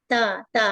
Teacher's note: तो ता के मखरज हमारे ये जुबान जुबान की नोक सनाया उलिया यानी कि दो दांत जो होते हैं सामने वाले उसकी जड़ में टच हो रही है।